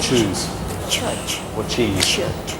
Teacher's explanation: it's a little puff of air and after it you have a hiss